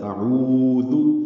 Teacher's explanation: حمزہ کو اقصی حلق سے ادا کرنا ہے، عین وسطی حلق سے ادا کرنا ہے، اس کو 2 حرکات لمبا کرنا ہے، یہ واو مدہ ہے۔